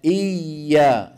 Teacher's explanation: صوت الياء لا ينقطع لانها حرف رخو